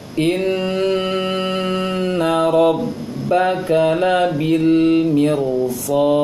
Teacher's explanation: Dan nun tasydid ingat ditahan lama.